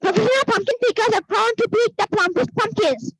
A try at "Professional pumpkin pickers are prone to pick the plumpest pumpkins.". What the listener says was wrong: Very good, yes, পিটাকে আমাদের পি উচ্চারণ করতে হবে।